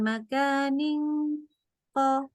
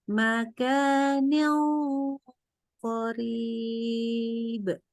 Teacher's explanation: kalau ketemunya kof itu huruf yang tebal. Jadi dengungnya itu tebal. Jadi jangan makanin kof.